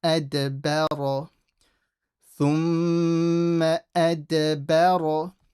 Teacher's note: So everything's empty so far, and then we get to the ra, which we make full. So don't make the ba full as well, trying to make the ra full. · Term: ra is heavy